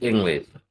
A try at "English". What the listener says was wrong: Yes, your tongue has to be pushed back a little bit.